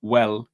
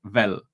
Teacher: the W sound is a v so when you need to say well you say Vel